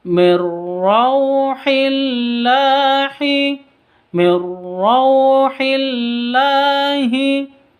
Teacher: Non mati bertemu dengan ro, cara bacanya masuk langsung ke ro. Mir seperti itu tanpa dengung. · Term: idgham bila gunnah